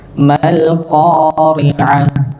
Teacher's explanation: maka mimnya langsung masuk kepada lam. Mal sama dialirkan, jangan sampai terputus atau dibaca mundur.